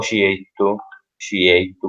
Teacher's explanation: nel palermitano C seguito da E è pronunciato certu o ciettu, ciettu, con questa sh, diciamo, sh abbastanza lieve